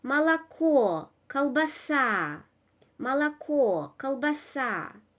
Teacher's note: Words which come in with three syllables and the final syllable is stressed.